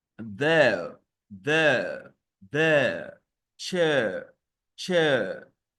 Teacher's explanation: a glide from the e to the schwa sound